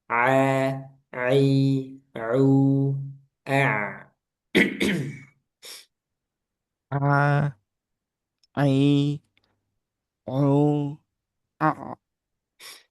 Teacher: ain ini salah satu huruf yang tidak boleh masuk hidung ya.